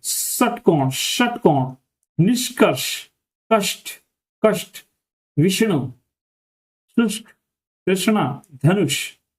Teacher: इन इस वाले वर्ण को उच्चारण करते समय जो हमारी जीभ है वो पीछे की तरफ मुड़ जाती है। पीछे का मतलब है जिधर हमारा जो है मूर्धन्य होता है उधर की जो है मुड़ जाती है। · जीभ को पीछे मोड़कर बोला जाता है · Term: शह